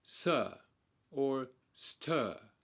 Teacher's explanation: The mid or central vowels are those in which the middle of your tongue is arched in the place where the hard and soft palates meet. For each of the vowel sounds, the mid-vowel sounds, your jaw is relaxed and the lips are in a neutral or relaxed position. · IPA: /ə/